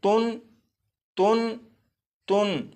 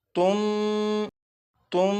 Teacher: और आपने एक कायदा पढ़ा था कि नून साकिन के बाद अगर बा आ जाए तो नून साकिन को मीम से बदलकर गुन्ना करके पढ़ेंगे। तो यहाँ पर नून साकिन के बाद बा मौजूद है, लिहाजा इस नून साकिन को मीम से बदलकर गुन्ना करके पढ़ेंगे।